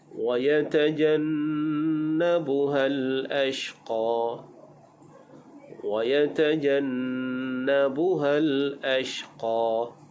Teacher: Ashqa huruf shin makhrajnya di tengah lidah, jadi dibaca dengan tafasyi. Wa yatajannabuhal ashqa, berdesir, iaitu berhamburan udara.